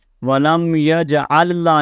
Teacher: وَلَمْ يَجْعَلْ لَهُ عِوَجًا، اب یہاں پر یہ دو لامیں ہیں تو ایک لام کو پڑھا جائے گا، پہلی لام کو دوسری کے اندر ہم ادغام کر دیں گے